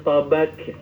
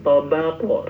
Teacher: jangan pantulannya menjadi huruf kaf ya, tapi tetap qaf.